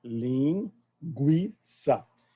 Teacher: Não é a U na fala, ela é uma semivogal chamada posterior